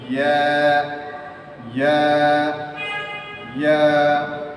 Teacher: জিহ্বার মাঝখান থেকে বলতে হবে, জিহ্বার মাঝখান উপরে তালের সাথে লাগিয়ে নরম করে বলতে হবে